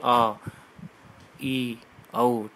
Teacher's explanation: इनके उच्चारण में हास्य स्वर से दुगुना, देख लो इसमें लिख रखा है मैंने, हास्य स्वर से दुगुना समय लगेगा इसमें। जो लघु में लग रहा था उससे दुगुना समय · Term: दीर्घ स्वर